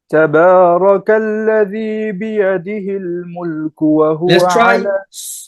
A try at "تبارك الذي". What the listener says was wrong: Let's try soften that kaf. So your kaf was borderline qaf. Tabarak. You said kalladhi. You never said qaf. You never said qal, but you never said ka. Kalladhi, right? Kaf is very, very soft. It's got a quality called hams. Tabarakalladhi, kalladhi. It should be soft. You're making it really, really hard.